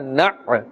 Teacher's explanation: Iyyaka na' noon, ayn, fatha, na'. So here the jerking sound must be made with a little bit more emphasis because of the ayn.